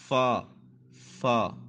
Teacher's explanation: اوپر کے دانتوں کے کنارے جو ہیں وہ نچلے ہونٹ جو ہیں اس کا تر حصہ جو ہوگا وہاں پہ لگے گا